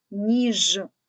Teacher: останній звук Ж приголосний твердий позначаємо однією рисочкою